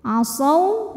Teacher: Nah ini asawwa hukumnya adalah idgham mutamatsilain karena waw sukun bertemu dengan waw berharokat. Huruf yang sama persis, makhraj dan sifatnya bertemu, maka dibacanya dimasukkan ke waw kedua. Ini lebur ya.